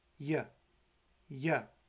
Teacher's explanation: the letter Y represents a voiced palatal approximant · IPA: j